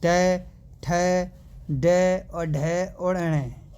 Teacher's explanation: मुंह के भीतर की जो छत है उसका जो अगला भाग है दोस्तों वहां से बोले जाते हैं · मुंह के भीतर की छत को जो अगला भाग है वहाँ से बोले जा रहे हैं। और इनको जो मतलब कि जो वर्ण होगा दोस्तों वो मूर्धन्य बोला जाएगा भाई।